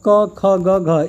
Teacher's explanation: क ख ग घ इनका उच्चारण स्थान क्या होता है, कंठ होता है